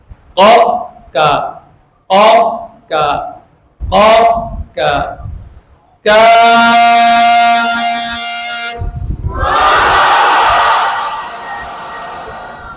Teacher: जुबान की जड़ से थोड़ा सा ऊपर वो हिस्सा सख्त वाले तालू को लगाना है। सख्त वाले तालु नरम हिस्से से ऊपर वहां से ये काफ अदा होगा। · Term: बारीक हरफ